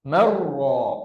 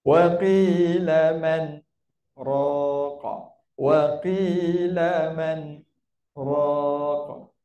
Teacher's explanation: Tapi oleh kerana muncul saktah kat situ, hukum idgham berubah menjadi hukum izhar. Kenapa? Sebab berhenti dia.